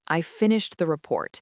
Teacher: the pitch falls dramatically on the word report, and that signals the end of the thought. It's done. And conversely, rising intonation signals incompleteness or a question. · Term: Falling intonation